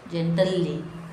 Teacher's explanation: in the word gently, the LE sound from gentle plus li is dropped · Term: Haplology